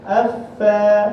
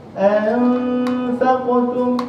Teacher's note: Kita tak boleh tebalkan huruf fa sebab rongga keadaan lidah kita mendatar. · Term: nipis